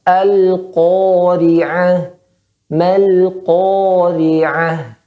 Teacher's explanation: tebalkan ko-nya dan panjangnya tebal